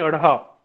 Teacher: उत्प्रेक्ष व्यंजनों के उच्चारण जीभ ऊपर उठकर पहले मूर्धा को स्पर्श करती है। उत्प्रेक्ष का मतलब होता है कि जिह्वा किस प्रकार से एक तरह से मुख गह्वर में किस पर उत्प्रेक्ष हो जाती है, किस तरह से वो बार बार मुड़ती है और मुड़ करके किस प्रकार से एक ध्वनि निकालती है।